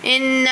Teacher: نون مشدد ہے, ان پہ غنہ کریں گے